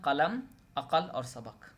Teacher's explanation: قاف ایک بندشی آواز ہے جو لفظ کی ابتدائی، درمیانی اور آخری تینوں حالتوں میں واقع ہوتے ہیں، مثلا قلم، عقل اور سبق.